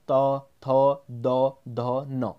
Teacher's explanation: जीभ का जो स्पर्श है वो दांतों को जाता है, तो उसको कहते हैं हम दंत्य। इसके अंतर्गत आ जाता है हमारा त वर्ग। · इन सबका उच्चारण करोगे तो आपको क्या लगेगा कि जो जीभ है वह सामने वाले जो दांतों हैं उनको क्या कर रही है, स्पर्श कर रही है। ठीक है, इसलिए इनको क्या कहा जाता है, दंती कहा जाता है।